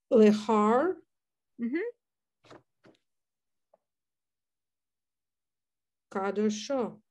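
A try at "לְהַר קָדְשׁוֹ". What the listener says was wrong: Yes, very nice.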